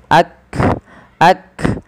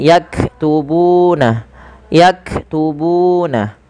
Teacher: Makhraj huruf kaf dari pangkal lidah kita